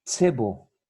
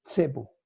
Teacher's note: Esta consonante es una africada que suena como cuasi TS